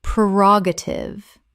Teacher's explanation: Four syllables with the stress on the second. The first syllable is pre, not per.